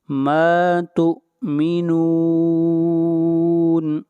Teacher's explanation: ما تؤمنون مد عارض وقفی، اس مد کو 3 الف کے برابر کھینچ کر پڑھیں گے۔